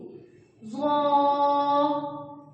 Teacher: یہ منہ کو گول کر کے پڑھا جائے گا، اس میں زبان پہ ہی ٹچ نہیں ہوگی۔ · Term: نرم حروف